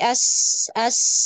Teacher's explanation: celah sempit maka akan lebih tajam lagi es-nya